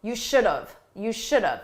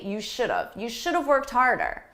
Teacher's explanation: Now, this is a mistake that many native speakers make because in spoken English, we take have, which is the grammatically, correct choice. But we reduce it, we say it quickly and it sounds like of